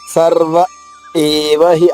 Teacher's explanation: ఆగాలి సర్వ తర్వాత ఆగి ఏవహి